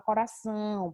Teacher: É você falar e perceber que o som da palavra ele sai através do nariz. Quando você fala lá a palavra coração, perceba que esse são. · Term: sinal de nasalização